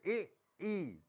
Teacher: तालु के उच्चारण स्थान के स्वर, तालु पे जीभ तालु ऊपर लगती है